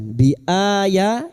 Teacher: bertemunya hamzah dengan mad badal. Dua harakat kita panjangkan.